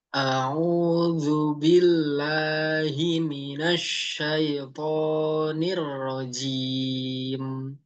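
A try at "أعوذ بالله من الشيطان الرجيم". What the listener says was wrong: Afwan, to-nya masih agak kepanjangan dikit, ya.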